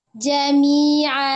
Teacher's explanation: Jami'a dari tenggorokan tengah, kalau hamzah dari tenggorokan bagian bawah. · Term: ain